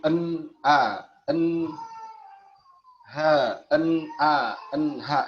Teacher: Makhraj nun mati di ujung lidah, makhraj hamzah dan ha ini di tenggorokan paling bawah.